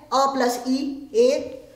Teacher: कुछ ऐसे वर्ण हैं जो 2 भागों को मिलाकर बनते हैं, जैसे एदेतौ कंठतालु, यानी ए और ऐ ये 2 स्वरों का उच्चारण कंठ और तालु 2 से मिलाकर दोनों का प्रयोग होता है